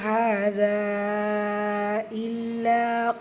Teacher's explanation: மத்தை தொடர்ந்து அடுத்த வாத தொடக்கத்தில் அலிஃப் இருக்குது. ஸோ இது மத்து முன்ஃபசில் 4 ஹரக்கத்தளவு நீட்டம் கொடுத்து ஓதணும். இல்லை ஷத்தா இருக்க அழுத்தம் கொடுக்கணும்.